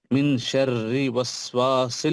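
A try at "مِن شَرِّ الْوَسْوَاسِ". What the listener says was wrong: नहीं, मिन शर्रिल, लाम को मिला,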